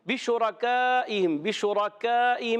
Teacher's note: مگر یاد رکھیں شین پر پیش آنے کی وجہ سے ہونٹ گول ہو جائیں گے